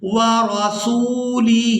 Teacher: سین کو واو مدہ کی وجہ سے کھینچ کر ادا کریں گے